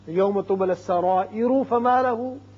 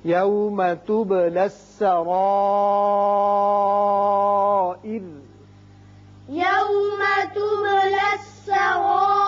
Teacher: جب وقف کر رہے ہیں تو چونکہ را ساکن ہو جائے گا پیچھے زیر ہے اس صورت میں یہ را باریک ہوگا